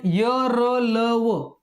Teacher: य र ल व या व्यंजनांचे जे उच्चार आहेत त्यांचा मुखाचा भाग थोडासा उघडलेला असतो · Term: इशत विवृत्त